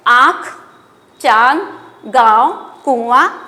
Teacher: क्या होता है चंद्र बिंदु चंद्रबिंदु को अनुनासिक कहा जाता है इसका उच्चारण नाक और मुंह दोनों के सहायता से किया जाता है